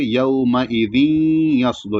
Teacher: یعنی غنہ کے ساتھ پڑھیں گے اور تھوڑی دیر ناک میں آواز رہے گی غننے کی۔ تو یومئذ یصدر، یس یہاں سات ساکن ہے، سات کو موٹا پڑھا جائے گا اور سیٹی کی آواز بھی رہے گی۔